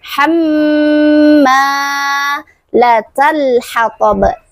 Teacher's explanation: Setelah huruf mim terdapat huruf alif. Nah, huruf mimnya adalah huruf mad tabi'i, yaitu mad atau mad asli. Dibacanya panjang 2 harokat.